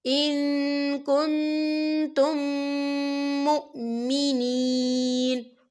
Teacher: یہاں میم ساکن ہے اور میم ساکن کے بعد پھر میم آ رہا ہے، تو یہاں پر ادغام شفوی ہو رہا ہے، تو ہم یہاں غنّہ کریں گے، اسے غنّے کے ساتھ پڑھیں گے.